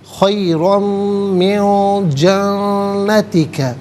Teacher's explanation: من میں نون ساکن ہے، اس کے بعد جیم حرف اخفا ہے تو نون ساکن کو اخفا کے ساتھ پڑھیں گے، یعنی ناک میں آواز لے جا کر گنگنانا۔ خیرم من جنتک، جنتی کا میں نون مشدد ہے، جماؤ کے ساتھ پڑھیں گے، غنّے کے ساتھ ادا کیا جائے گا۔